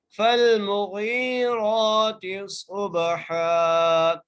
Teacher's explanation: لام سے ملانے ہیں، میم کو بغیر کھینچے پڑھے ہیں، اور غین کو ایک الف کی مقدار کھینچ کے پڑھ رہے ہیں کیونکہ یہاں پر یہ ایک مدہ کا قید ہے، را کو